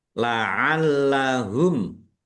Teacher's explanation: Lamnya dibaca dobel ada tasdidnya ditekan biar tampak dobel. Mim sukun bertemu dengan huruf ya.